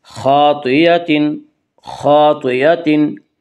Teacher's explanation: خا کو بھی پر پڑھیں گے اور طا کو بھی پر پڑھیں گے، کیونکہ یہ دونوں حروف حروف مستعلیہ میں سے ہیں، اور حروف مستعلیہ 7 ہیں جن کا مجموعہ خصہ ضغط قز ہے، جو ہمیشہ ہر حال میں پر پڑے جاتے ہیں۔